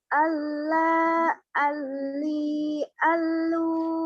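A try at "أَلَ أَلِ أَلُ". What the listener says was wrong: L-nya jangan ditahan. Allah yang ditahan la-nya. L-nya jangan ditahan. Allah ali alu ya. Allah, ali, alu.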